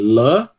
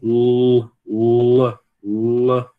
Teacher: A única diferença é que o L escuro ele tem um sonzinho de U também · Não tem uma protuberância aqui na parte de trás, né? a língua, a parte de trás da língua não se levanta no no L claro e ela vai levantar aqui no L escuro